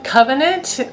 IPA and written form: ˈkəvənənt (covenant)